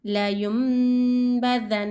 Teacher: نون کو میم سے ملا کر یعنی نون کو میم سے بدل کر غنہ اور اخفا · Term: اخلاف